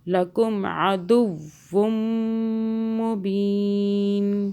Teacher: میم مشدد پہ غنہ ہوگا 2 سیکنڈ کا